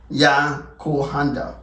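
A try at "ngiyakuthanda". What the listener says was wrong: We sound the T as well. Remember, we sound every letter, every vowel. Yakutanda.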